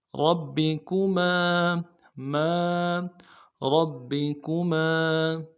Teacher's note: آلاء، آلاء ربکما، ربکما، را کو موٹا ادا کرنا ہے اور با کے ساتھ ملانا ہے، با کے اوپر تشدید زور دیں گے، اگلے با کو نرم سے ادا کریں گے، کاف کو بھی نرم سے ادا کریں گے، میم کے ساتھ الف مدہ ہے، ایک الف مقدار میں کھینچیں گے